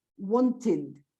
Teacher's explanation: So in those two cases, ending in the sound T or D, you pronounce id.